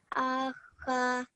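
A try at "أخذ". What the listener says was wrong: So this za is bit thin sound, light sound. So it is za, simple za, not za. We don't join upper and lower teeth. Akhaza.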